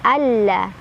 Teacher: Innallah, Allah ada alif lam syamsiyah karena ada alif lam bertemu huruf syamsiyah yaitu lam. Cara bacanya langsung masukkan ke lam kedua ditekan.